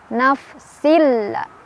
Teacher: tanwinnya langsung dileburkan atau dimasukkan ke lam tanpa dengungan. Jadi cukup ditekan, gak usah ditahan. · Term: idgham bila gunnah